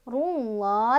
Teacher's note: lafadz Allah dibaca tafkhim atau tebal, karena sebelum lafadz Allah atau lam jalalahnya ini ada huruf berbaris dhammah ya. Jadi dibacanya ditebalkan.